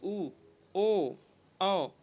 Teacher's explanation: जीभ को पीछे की ओर खींचते हैं और जो पीछे वाला भाग है वही काम कर रहा है ना। तो इसलिए हम इसे क्या कहते हैं, पश्च स्वर कहते हैं।